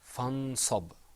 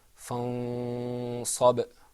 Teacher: something happened to the noon. It wasn't articulated completely. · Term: ikhfa